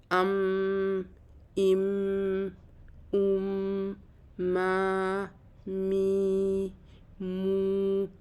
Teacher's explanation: تو میم کا مخرج ہونٹ ہے، لیکن یہ آواز نکلتی ناک سے ہے · جب ہم ہونٹوں کو بند کر لیتے ہیں تو یہ آواز میم کی بنتی ناک میں ہے